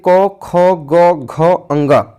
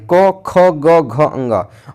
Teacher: कंठ से हो रहा है। मतलब जो कंठ है आपका उससे झंझनाहट की आवाज आ रही